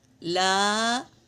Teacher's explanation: لا، یہ بھی مد ہے، مد منفصل، اسے بھی 3 سے 4 الف کے مقدار کھینچیں گے